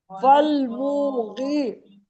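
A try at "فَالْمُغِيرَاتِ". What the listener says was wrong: فالمونی منہ کو نہیں کھینچنا نا، رات کو کھینچی میں کھینچنا ہے لیکن موٹا پڑھنا ہے، تین کو جلدی پڑھیں بات سنیں، تین اور را کو کھینچنا ہے برابر، فالمغیر، فالمغیر، فالمغیر، فالمغیر، فالمغیر، فالمغیر، فالمغیر، فالمغیر، فالمغیر، فالمغیر، فالمغیر، فالمغیر، فالمغیر، فالمغیر، فالمغیر، فالمغیر، فالمغیر، فالمغیر، فالمغیر،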